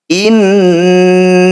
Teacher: Nun bertasdid disebut bacaan gunah musyadadah bacanya harus dengung atau ditahan dua harakat